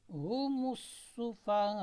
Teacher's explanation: سین میں سیٹی بجانی ہے آپ نے، یہ آواز آنی چاہیے.